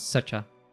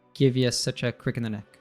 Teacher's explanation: And such a, we also reduce and connect. So the a reduces to a schwa sound, and becomes such a.